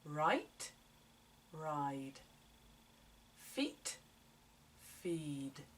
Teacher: just make the vowel sound longer before the voiced sound